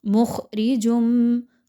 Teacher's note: خا موٹا حرف ہے، خوب موٹا کر کے پڑھیے، باریک نہیں پڑھنا، اور راہ کے نیچے چونکہ زیر ہے اس لیے اس را کو باریک پڑھیں گے۔